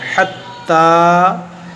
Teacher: ये ता पर खड़ा ज़बर है, इसको खींचेंगे एक अलिफ के बराबर